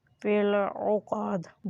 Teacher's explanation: دال کے اوپر بھی قلقلہ ہوگا یعنی دال کی آواز بھی ٹکرا کر باہر آئے گی